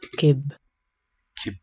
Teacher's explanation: K is a high consonant, meaning the position of the tongue body is high up in the mouth